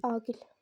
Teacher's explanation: a qalındır, i incədir. Yəni, burada ahəng qanunu pozuldu. Yəni, ahəng qanunu pozula da bilir bəzi sözlərdə.